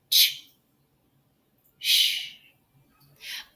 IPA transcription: ʃ